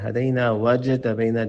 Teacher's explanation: جیم پہ جھٹکا دیں، الف سائلنٹ ہے، و اجتبینا نہیں ہے، وجتبینا.